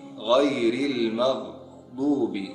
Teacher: Selanjutnya ada huruf gha, gha. Sering ini diucapkan dari pangkal tenggorokan atau dari awal tenggorokan. Jadi gha, gha, gha.